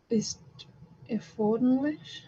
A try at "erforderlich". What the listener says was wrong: Erforderlich, ja.